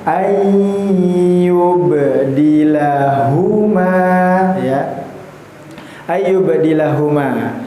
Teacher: huruf na dengan huruf ya itu ialah huruf yang makhrajnya sama ya, berada di awal ee rongga mulut bagian depan tetapi sifatnya berbeda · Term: idgham mutajanisain